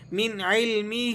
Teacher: آپ جانتے ہیں عین حروف حلقی میں سے ہے. من علمہ، ہاں پر کھڑی زیر بھی ہے اور مد بھی لگا ہوا ہے تو آپ نے اسے کھینچ کر ادا کرنا ہے